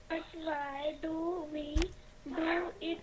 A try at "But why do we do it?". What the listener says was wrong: But why? No, ऐसे बोलेंगे. But why? Read it properly. Read this as a question. But why do we do it?